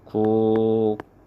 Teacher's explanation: 기역하고 비읍하고 만나면 뒤에 비읍이 쌍비읍으로 이렇게 소리가 납니다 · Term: 된소리 대기